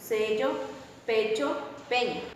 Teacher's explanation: cuando la vocal e va en contacto con una consonante palatal el timbre de dicha resulta más cerrada